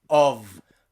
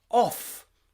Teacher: In the word of, you are vibrating your vocal cords. You are making a voiced sound.